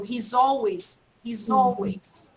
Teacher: when i have a vowel after that a vowel sound i have to put a z pronunciation